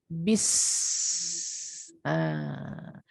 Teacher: Ular. Yes, hissing sound of the snake.